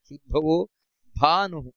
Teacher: ಶುದ್ಭವೋ ಭಾ ಅನ್ನುವುದು ಮಹಾಪ್ರಾಣ